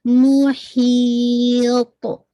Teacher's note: آپ یہاں پہ قلقلہ بھی کریں گے لیکن آپ کو پتہ ہے کہ ہیوی لیٹرز ہے تو ہیوینس بھی واضح ہوگی